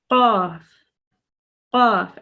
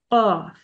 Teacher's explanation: the sound comes from the furthest back part of the tongue and it touches the roof of the mouth, so it blocks the throat. So imagine where your tongue, the root of your tongue starts, and your throat, that's where this sound comes from.